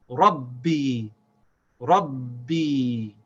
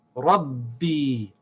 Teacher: we have to say without stopping the sound of the ba no break there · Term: shad